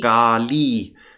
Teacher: Kali is not a short I, it's a long I